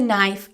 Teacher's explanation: The knife, the main word here, has a silent K.